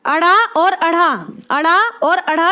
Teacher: अड़ा और अढ़ा ध्वनियां क्या हैं, कैसी ध्वनि है, मूर्धन्य उच्चिप्त ध्वनि